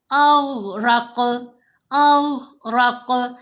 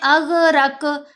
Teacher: غین کو جب ہم نے ساکن پڑھنا ہے تو ٹھہری ہوئی آواز بنے گی، یعنی ایسے قلقلہ کی طرح ہلانا نہیں ، لیکن قاف کو ہلانا ہے کیونکہ غین حروف قلقلہ میں